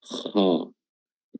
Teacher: Kuncinya ada pada pangkal lidah atau lidah bagian belakang yang diangkat · cara menebalkan huruf kha bukan dengan memonyongkan kedua bibir ke depan, kha, tapi tetap terbuka ke atas, kha. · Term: isti'lah